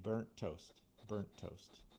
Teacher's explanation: So, we just cut just like we normally do. We only pronounce the one T.